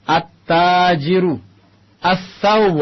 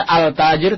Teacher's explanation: Alif lam, lamnya masuk ke huruf yang selanjutnya. Lamnya melebur dengan huruf selanjutnya at-tajir, maka ditasdid. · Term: huruf asy-syamsiyah